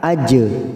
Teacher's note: jim sukun qalqalah sugro, kita pantulkan